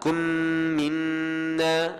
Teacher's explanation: mim kosong bertemu dengan mim idgham. Idgham syafawi. Kena tutup mulut rapat.